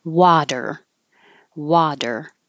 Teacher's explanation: the T changes to a d because it's between two voiced sounds and it's in the unstressed syllable